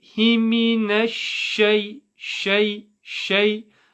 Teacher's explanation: the sheen comes from the middle of the tongue. So it's when the middle of the tongue connects to the top of the top of the palate of your mouth, the middle of the palate.